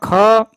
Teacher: ख स्पर्श व्यंजन कंठ ध्वनि अघोष महाप्राण ध्वनि है